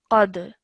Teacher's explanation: Again, this dal over here I've highlighted because the rule of qalqala would be applied over here, because when you're stopping over here, this kasra becomes a sukoon, and then dal is one of the qalqala letters. So when you join the qaf to the dal, you produce a jerk sound, qad, like that.